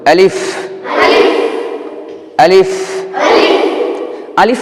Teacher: দুই ঠোঁট লাগবে না আর লম্বা হবে না · আলিফ বলার সময় 2টি বিষয় খেয়াল করতে হবে, 2 ঠোঁট লাগবে না, লম্বা হবে না।